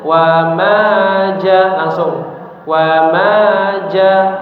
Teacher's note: Maka diperhatikan bacaan ya mad tabi'i yang panjangnya 2 harokat dibaca 2 harokat saja ya. · Misalkan wama jangan terlalu panjang. Jangan wama ja ah itu terlalu panjang tapi dua harakat saja.